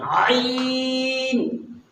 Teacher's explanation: ہا اور عین، یہ دونوں حروف ایک ہی جگہ سے، گلے کے بیچ سے نکلتے ہیں۔ جیسے ہم نے ہا کی ادائیگی بتائی تھی، ہا، اسی طرح سے عین بھی یہی سے ادا ہوتا ہے۔